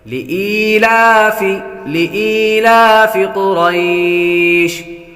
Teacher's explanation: لِإِيلَافِ قُرَيْشٍ، لِإِيلَافِ یا کو بھی لمبا کریں گے، یا حروف مدہ میں سے ہے، لام پر کھڑا زبر ہے، کھڑے حرکات حروف مدہ کے قائم مقام ہیں، اس لیے ان دونوں کو ایک الف یعنی دو حرکات کے برابر کھینچ کر پڑھیں گے۔ لِإِيلَافِ قُرَيْشٍ، قاف حروف مستعلیہ میں سے ہے، اس لیے اس کو پر پڑھیں گے۔